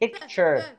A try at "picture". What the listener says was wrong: ما فيش بيكي. بيكي. بيكي. بيكي. لا ما فيش بيكي. Yeah, guys, say picture. Picture. لا مش بيكي.